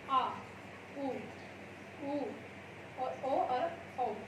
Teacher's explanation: जब जिनको हम बोलते हैं तो जीभ का पिछला भाग ऊपर की तरफ उठता है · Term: स्पर्श स्वर